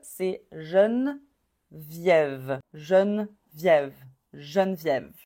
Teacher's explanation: Tu vois, le deuxième E est pas prononcé.